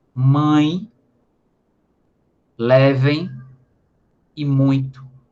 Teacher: o som que sai do nariz, ao pronunciar uma vogal nasal, aliás, um ditongo nasal